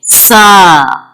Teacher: Tongue touches the edge of the top to the front teeth. So, when it comes out between your teeth, then sounds come sa.